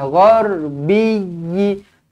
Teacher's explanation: Dekat huruf ya ini ada sabdu, maka kena tekankan. Kena beratkan.